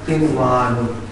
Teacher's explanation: नून साकिन के बाद वाव है, लेकिन यहाँ पर कोई गुन्ना नहीं होगा, ये वाव पढ़ा जाएगा